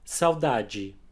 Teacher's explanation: the unstressed D and E at the end of words like this one, will always have a 'djee'